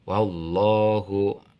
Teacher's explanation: lamnya dibaca tafhim tebal karena lam lafad Allah